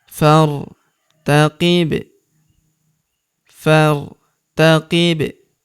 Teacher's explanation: Huruf ba berharakat sukun kita pantulkan atau kita qolqolahkan.